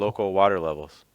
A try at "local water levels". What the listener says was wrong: Slightly firmer on the R if you can on water. Local water levels. Water.